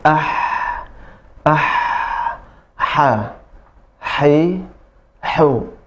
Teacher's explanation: Makhrajnya di tengah tenggorokan bersamaan dengan huruf a. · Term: Ha kecil